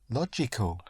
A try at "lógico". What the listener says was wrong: The G.